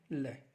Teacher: यानी पार्श्व का मतलब पास, वे वर्ण जिनके उच्चारण में जिह्वा मसूड़ों को छूती है और हवा का प्रमुख वेग जिह्वा के आसपास या अगल बगल से निकल जाता है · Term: पार्श्व वर्ण